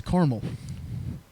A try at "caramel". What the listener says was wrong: Just CARMEL? There's A though.